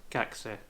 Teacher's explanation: the k sounds more like a K because the U is left out and it ends up sounding more like kakse.